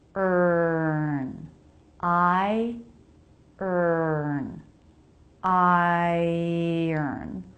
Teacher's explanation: Since the vowel there is the schwa, you don't even need to try to make a vowel sound there. When R comes after schwa, it absorbs it. Just one sound.